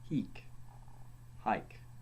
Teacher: H was a breathing sound, an aspirate, as in English, only less harshly pronounced